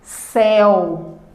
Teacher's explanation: Agora eu tenho uma pronúncia aberta da minha vogal, acompanhada da semivogal U, e essa presença aberta, esse som aberto, é representado pelo fonema eu.